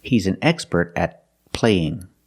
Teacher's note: use a stop T and Link The Sounds